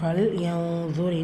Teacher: இது இஹ்ஃபாவுடைய சட்டம். நூனை பாதியாக மறைச்சி குன்னா செஞ்சு ஓதணும்